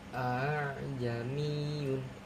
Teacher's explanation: Tasil adalah ee menggabungkan dua hamzah foto atau menggelombangkan hamzah yang kedua sehingga dibaca panjang